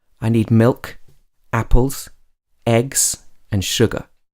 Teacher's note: when you're talking about a list of items or lists of things then you use this rising intonation for the first few and then the falling intonation for the last item